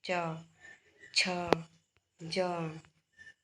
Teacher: च, छ, ज के उच्चारण में तालु पर अधिक बल पड़ता है, अतः ये वर्ण तालव्य कहलाते हैं।